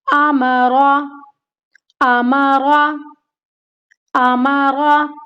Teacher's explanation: तीनों को नहीं खींचना, क्योंकि तीनों क्या है, मुतहर्रिक हैं, तीनों के ऊपर जबर की हरकत है